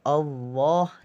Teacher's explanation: Allah di sini adalah lam jalalah yang tafkhim. Yang bacaannya lafadz Allah, lam jalalahnya ini dibaca tebal.